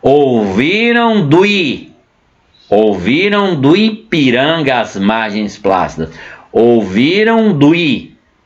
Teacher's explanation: Perceba que eu emendei, eu falo numa nota só, ok? Esse processo nós chamamos de elisão, é quando a vogal emenda com outra, uma palavra termina com vogal, a outra começa com vogal e ocorre emenda.